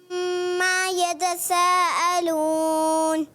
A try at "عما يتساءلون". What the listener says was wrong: یتسا میں سین ہے سا ہے، سین کی ادائیگی کریں. عما يتساءلون. اور میم کی زبر لمبی بھی نہیں کرنی، اس کا بھی خیال رکھنا ہے. یتساءلون حمزہ سین اس کی ادائیگی کلیئر کرنی ہے.